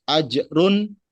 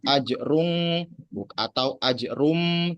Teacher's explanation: maka dibaca dengan jelas ajrun, enggak ajrung atau ajrum, tapi ajrun, jelas unnya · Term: idhar